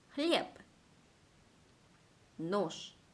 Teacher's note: 즉 b 대신 p로, z 대신 s로 발음이 되는 겁니다. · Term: 무성음화